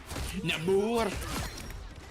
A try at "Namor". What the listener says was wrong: You gotta roll the R. You gotta roll the R.